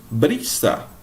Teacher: Então, a sílaba tônica é o bri.